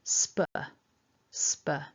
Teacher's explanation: our initial syllable with the sp cluster and then a schwa sound, a weak sound